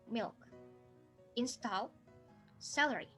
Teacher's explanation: japanese phonological system doesn't recognize the lateral l sound